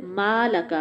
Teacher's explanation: میم جو ہے دونوں ہونٹوں کے ملنے سے ادا ہوگا، منہ کھلے گا، زبر بھی ہے، الف بھی ہے لیکن آواز ناک میں نہ جائے